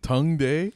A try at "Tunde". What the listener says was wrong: Tongue, no, Tun. No G in there.